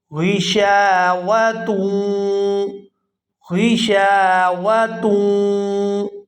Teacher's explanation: اور اگر یہاں پر ہم وقف نہیں کرتے تو پھر اس تا کو واو مشدد کے ساتھ ملائیں گے اور غنہ کریں گے